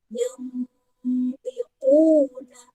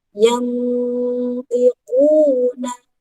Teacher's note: Kemarin sudah jelaskan, samar di sini maksudnya adalah ketika kita membaca huruf nun sukunnya, lidah kita sudah bersiap-siap untuk mengucapkan huruf to atau huruf di depannya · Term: ikhfa hakiki